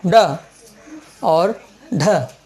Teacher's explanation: जीभ तालू के पास चढ़ती है और धम से नीचे गिरती है। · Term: उच्छित व्यंजन